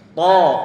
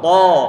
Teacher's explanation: Ini huruf ta, ini diantara huruf yang tebal. Huruf ta tebal, yaitu dia punya sifat isti'la, yang pengucapannya pangkal lidah dia harus naik ke atas. Termasuk pertengahan lidah dia perlu naik ke atas ataupun ditempel ke atas untuk memberikan sifat idbaq.